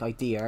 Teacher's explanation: Yeah, my R's are really thick, so basically if I say something like idea, it adds a bit of an R to it